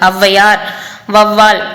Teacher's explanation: சொற்கள்ல சேர்ந்து வரும்போது 1.5 மாத்திரை அளவுல வந்து ஒலிக்குது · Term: ஔகார குறுக்கம்